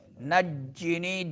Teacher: تو شدت کے ساتھ ادا کریں گے جیم کو. نی میں مدہ ہوگا.